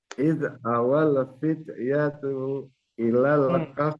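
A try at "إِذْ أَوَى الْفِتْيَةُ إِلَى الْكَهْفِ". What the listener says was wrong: Tunya pendek.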